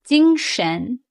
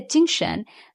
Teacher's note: First tone, high steady. And second tone shen is rising tone.